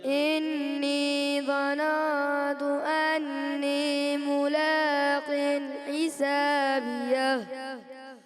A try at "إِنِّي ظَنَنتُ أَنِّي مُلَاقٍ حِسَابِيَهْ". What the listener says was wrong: इन्नी ज़नन्तु गुन्ना की मिक़दार और थोड़ा सा और ज़ौ जो है ना आपने पुर करना है ज़ौ और मोटा करें ठीक है इन्नी ज़नन्तु अन्नी मुलाक़िन हिसाबिया